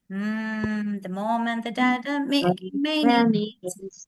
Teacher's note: So lips are closed. Lips are closed. And it's a nasal sound. Your sound comes through nose.